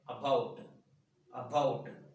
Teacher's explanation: It is a disyllabic word, about. Here, the first syllable is not stressed. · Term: weak form